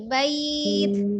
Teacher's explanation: Bait, ada nafasnya ya, ada aliran nafasnya. Tidak bait, gitu, tidak ditutup dengan seperti huruf to, tapi tidak qalqalah ya. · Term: alhams